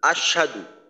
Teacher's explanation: না হয়ে এমন ভাবে উচ্চারণ করা হয় যে আশ সাধু অর্থাৎ সিনে তাসদিদের মত পড়া হয় হা এর জবরের উচ্চারণটাকে বাদ দেওয়া হয় অর্থাৎ হামজাদ শিন জবর আশ সিন জবর সা দ পেশ দু